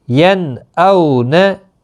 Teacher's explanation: नून साकिन के बाद हमज़ा, यहाँ इजहार होगा, अब गुन्ना नहीं होगा